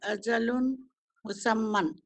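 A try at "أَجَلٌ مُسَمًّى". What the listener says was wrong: अजलुम, हाँ, ये जब भी शद्दा आएगा इसकी अलामत की वजह से ये नून की आवाज खत्म हो जाएगी। अजलुन नहीं पड़ेगी, अजलुम, अजलुम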